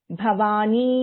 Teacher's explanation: ಭ is A ಮಹಾಪ್ರಾಣ